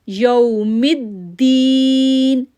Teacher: آگے ہم پڑھیں گے مالکی، مالکی، میم کو کھینچا کھڑی زبر کی وجہ سے، مالکی یوم الدین، یو او باؤ تو از دا لین لیٹر، یا واؤ ساکن سے پہلے اگر زبر ہوگا تو وہ لین لیٹر ہے، سافٹ پڑھیں گے، جلدی پڑھیں گے